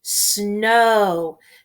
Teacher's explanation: Notice the OW is making the long O sound. We do not hear the W.